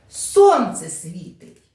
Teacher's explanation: це речення яке вимовляється з підвищеним голосом або навіть викрикується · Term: окличні